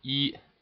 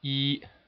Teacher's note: You can see that is how we write it, first tone in pinyin, and it goes from level 5 and it ends at level 5 at the end of the tone. · just a straight constant tone all the way at the level 5. So start up at 5 and draw a straight line across.